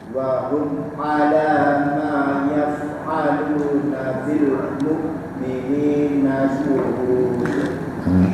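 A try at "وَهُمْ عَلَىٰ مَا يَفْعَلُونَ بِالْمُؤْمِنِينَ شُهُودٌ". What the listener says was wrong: Shinnya keringanan, kurang lepas ya, S-nya besar. Wa hum 'ala ma yaf'aluna bil mu'minina syuhud. Syu ya, syu ya.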